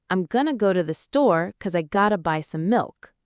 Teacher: because becomes 'cause, have to becomes gotta